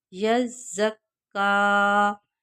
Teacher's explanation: یہاں آپ نے دیکھا ہے ہم نے کاف کو ایک الف کے مطابق کھینچ کر پڑھا ہے، اس لیے کہ کاف کے اوپر کھڑی زبر ہے، اور اس کے ساتھ یہ یا ہے، اس کو ہم نہیں پڑھیں گے، صرف کھڑا زبر کو جب ہم پڑھیں گے تو اس کو ایک الف کے مطابق کھینچ کر پڑھیں گے۔